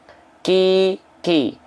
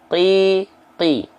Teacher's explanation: Yang kaf itu dia keluar nafas sedikit. Ki. Yang qaf qi. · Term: hams